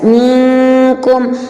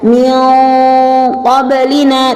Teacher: Qaf di sini adalah merupakan merupakan huruf yang dibaca secara tebal, sehingga bacaannya berbeda dari kaf.